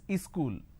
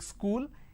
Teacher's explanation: in places like uh up bihar jharkhand they add another syllable they pronounce this as ischool